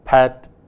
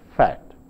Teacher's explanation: the plosive sound p, which is a bilabial sound, and the fricative sound f, which is a labiodental sound, are sometimes not distinguished in the speech of some speakers.